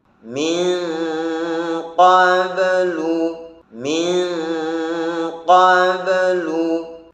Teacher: Yang betul adalah tanpa menambahi hamzah sukun sesudah qalqalah dan tanpa sakat atau jeda antara qalqalah dengan huruf yang sesudahnya